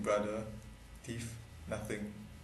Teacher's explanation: The avoidance of dental fricatives in brother, thief, nothing.